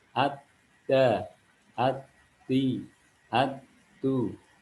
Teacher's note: Ini huruf dal ini karena pangkal lidah turun, maka dia menjadi huruf tipis.